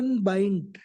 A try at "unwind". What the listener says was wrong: Unbind होता है, W होता है, bind नहीं होता, BIND bind, बांधना नहीं होता. Unwind.